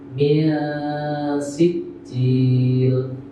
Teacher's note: Sehingga cara bacanya adalah min si. Baca min tapi lidahnya sudah posisi si.